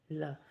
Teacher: जैसे हम ल बोलते हैं तो ल में हमारी जीभ और जो ये ऊपर का क्या है, ये मूर्धा, जीभ और मूर्धा के मिलने से मार्ग क्या हो गया, अवरुद्ध हो गया। उससे क्या होगा, ल का प्रोनाउंसिएशन होता है। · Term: पार्श्विक वर्ण